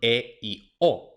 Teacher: Luego tenemos las vocales medias, que son E y O. Entonces, para pronunciar E y O, la lengua sube un poquito más que en la A